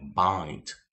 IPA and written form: baɪnd (bind)